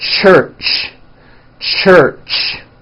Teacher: let's start with the CH it's a common sound in English it's a combination of the T sound and the SH sound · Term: CH sound